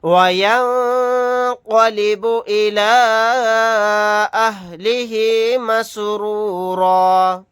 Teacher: یہاں پر نون ساکن کے بعد قاف ہے تو یہاں پر اخفا کا قاعدہ ہوگا · یہاں پر مد منفصل کا قاعدہ ہوگا، اس مد کو 3 الف کی مقدار کھینچ کر پڑھیں گے